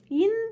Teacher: இரண்டாவது நா மேல்வாய் பல்லும் ஈரும் பொருந்தும் இடத்தில் நாவின் நுனியும் அதன் ஓரமும் நன்றாக பொருந்த நகரம் பிறக்கும்